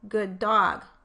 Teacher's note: I only produced one D in good dog, and if I put a space between the words in my phonetic transcription, I would have to decide if that D belonged to good or dog, when really it belongs to both of them.